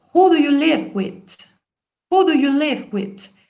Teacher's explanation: se oye más who y se oye más live, porque se enfatiza más el verbo y la question word